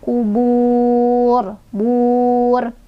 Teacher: ro-nya dibaca tebal karena ro-nya jadi ro yang disukunkan kan, dan sebelumnya wawu sukun, dan sebelum wawu sukun itu ada dhammah ya.